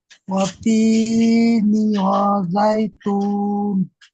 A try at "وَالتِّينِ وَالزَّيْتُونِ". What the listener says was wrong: দেখেন তায়ের উপরে তাসদিদ আর এখানে জায়ের উপরে তাসদিদ, অর্থাৎ দুবার করে পড়তে হবে। ওয়াত্তিনি ওয়াজ্জাইতুন।